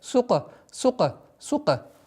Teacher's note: Васукуяха. Син мягкая, каф. Применяем правило калькаля.